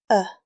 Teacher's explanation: It is a short, relaxed uh sound. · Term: schwa